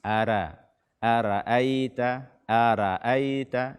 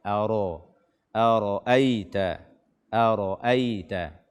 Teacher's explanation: pada kata aro atau ro berbaris fathah, ini dia dibaca tebal, tidak boleh dibaca tipis